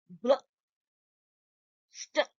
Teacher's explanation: If it is B and L, both of them are being pronounced, but in a blended form.